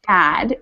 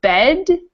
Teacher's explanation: much wider and open vowel sound than bed which is kind of more closed